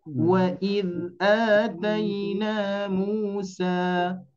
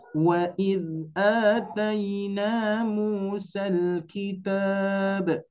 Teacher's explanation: ketika diwakafkan dibaca 2 harakat. Wa id atayna Musa dibaca panjang. Sedangkan ketika diwasolkan dibaca pendek.